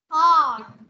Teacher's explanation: mình không bật ra âm n